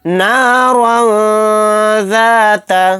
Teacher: تنوین کے بعد ذال آ گیا تو یہاں پر اخفا کا قاعدہ ہوگا، یہاں پر اخفا کر کے ہم پڑھیں گے نارا ذات لہب، با کو ساکن بنا کر پڑھیں گے کیونکہ یہاں پر آیت ہو رہی ہے، با ساکن ہوگا تو با کے اندر قلقلہ بھی ہوگا۔